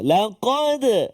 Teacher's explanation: Maka huruf qaf ni dia terletak di pangkal lidah belakang.